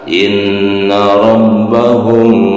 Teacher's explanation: In di sini ada nun bertasydid, yaitu hukum bacaannya adalah gunnah musaddadah ya, nun bertasydid, nunnya ditahan 2 harokat